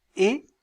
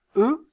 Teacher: quand je prononce e mes lèvres sont étirées lorsque je prononce e vous sentez qu'elles sont arrondies